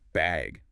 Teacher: they might ask, do you need a bag or even just bag with a rising tone